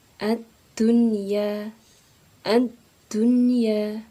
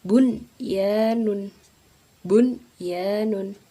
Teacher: Nun sukun bertemu dengan ya ini juga dibaca jelas, tidak berdengung. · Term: idhar mutlak